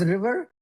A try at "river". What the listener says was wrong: No. Again, it's river versus liver, right?